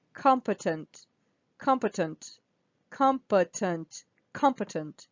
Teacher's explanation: the first syllable here is stressed so the O is stressed